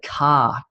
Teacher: In Australia, we'd say car, and we sort of miss the R sound, whereas Americans tend to go R, like I have a red car, but Australians say car.